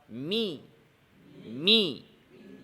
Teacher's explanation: কাসরা, দাঁতের নিচের পাটি নিচের দিকে এবং জিহ্বার মধ্যখান সামান্য উপরের দিকে দিয়ে মুখকে ভাঙতে হবে